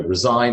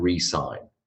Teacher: The verb resign with a z sound and another verb resign, re as in again, resign, sign again.